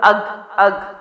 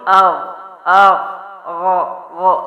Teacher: غین موٹے حروف میں سے ہے، حلق سے ہے. حمزہ زبر غین اغ اغ غ غ، یہ ساؤنڈ ہے اس کا.